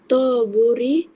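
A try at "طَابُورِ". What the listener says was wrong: panjang sikit. Taburi.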